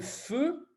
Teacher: c'est mes lèvres qui se serrent, et je provoque un souffle